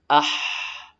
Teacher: ha yang keluar dari tenggorokan bagian tengah